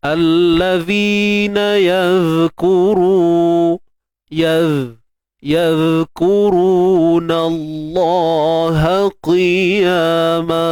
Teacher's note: Cuma zal ni kita kena jaga sifat rakhawahnya. Pastikan suara kita mengalir.